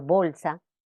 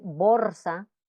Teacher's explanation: Es normal que la pronunciación de la L en posición final de sílaba o de palabra se relaje, pero en el habla esmerada debe evitarse que esta L relajada llegue a convertirse en una pronunciación de R